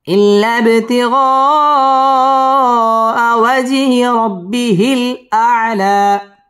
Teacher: পড়তে হবে ওয়াও ঠোঁটগুলো করে উচ্চারণ করতে হবে ওয়াজ জিম কলকলার হরফ ধাক্কা দিয়ে পড়তে হবে ওয়াজহি র র পুর হবে রব্বি বা তাসদীদ ওয়ালা হরফ রব্বিহিল